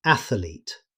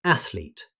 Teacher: Many learners add an extra syllable and say athlete. Native speakers simply say athlete. No extra vowel.